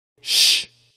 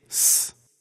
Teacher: There are no Greek letters that can make the sh sound. The closest we can get to the sh sound in Greek is s, the plain S sound. So we take the Greek letter sigma and it gives us the s sound.